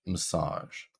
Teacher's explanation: Sage is our stressed syllable. So even though we have an A in our word massage, it is still pronounced with the schwa. Massage. It's quite quick compared to the in massage.